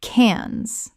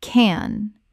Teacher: The S is completely silent in this French city name.